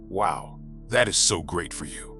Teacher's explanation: But listen to the pitch. It drops at the end of the sentence. [music] It is flat. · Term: The pitch flatline